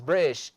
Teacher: the sound t comes as a glottal stop